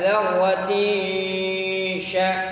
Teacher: Wa man ya'mal mithqala dzarratin syarran yarah, ya. Dzarrati dengung ke arah shin, ya, dzarrati sya, kita seakan-akan siap-siap mengucapkan huruf shin